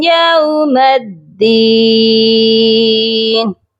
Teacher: میم کو دال مشدد کے ساتھ ملائیں گے تو سختی سے ملائیں گے